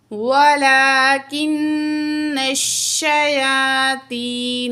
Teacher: یا مد ہے، دو الف کے برابر کھینچیں گے